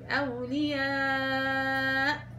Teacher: والوقف على الهمز هنا بنبر أولياء، بتشدي على الهمزة لأنها شديدة وبتعطيها النبر